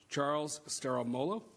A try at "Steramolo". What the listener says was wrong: Close. The I is silent. Compared to the other names, that was pretty good.